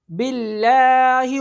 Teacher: یہ دیکھیں، اللہ عز و جل کے نام سے پہلے حرف کے نیچے ہے، یہ گرین ہے نا، اسے کیا نظر آ رہا ہے، یعنی یہ باریک پڑھا جائے گا. اللہ عز و جل کے نام سے پہلے حرف کے نیچے زیر ہے، اس صورت میں باریک پڑھا جائے گا